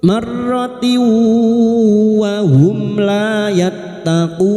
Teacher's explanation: Fi kulli marratiu, sekarang di sini kita wasol maka tak marbuto yang berharokat kasrah tanwin bertemu wawu idgham bi gunna masuk dengan mendengung, masuk pada huruf wawu dan mendengung selama 3 harokat